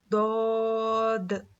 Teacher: जुबान की करवट को ऊपर के दाढ़ों में लगाने से दद अदा होता है। · زبان کی کروٹ کو اوپر کے داڑوں میں لگانے سے دود ادا ہوتا ہے.